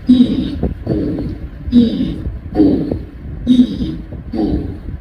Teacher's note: your tongue is moving forward and backward as you say E, U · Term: vagueness